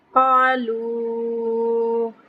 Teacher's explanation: قالوا قاف پہ تفخیم کریں گے، لمبا کریں گے، لون کو ہم مد ہے، وا مدہ اس کے اوپر مد ہے، یعنی اس کو ہم 3 سے 4 حرکت لمبا کریں کے پڑھیں گے۔